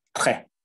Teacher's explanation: You don't pronounce the S at the end. It's just très.